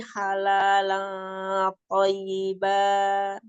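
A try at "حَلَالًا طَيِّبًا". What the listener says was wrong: thayyibah ada nabar, tonya kurang tebel sedikit itu istilahnya.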